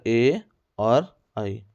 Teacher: कंठ ताल में ए और आई निकलते हैं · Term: कंठ तालव्य